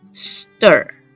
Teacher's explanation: 如果是IR或者是UR的话，它会发的是很卷的这个卷舌音 · 如果你两个无声的气音s跟t这两个字连在一起念的时候，那因为方便发音的原因，所以我们会把第二个无声的音变成是重音有声音的方便来念 。所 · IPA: [ɝ]